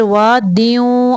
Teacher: آواز کو نیچے کی طرف سے غنہ کرتے ہوئے نکالنا ہے